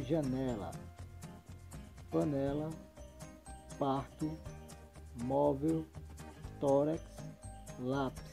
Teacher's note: a sílaba que é pronunciada com mais intensidade que está na penúltima sílaba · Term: paroxítonas